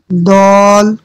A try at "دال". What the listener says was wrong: دال باریک. دال کو باریک کر. دال آرام سے.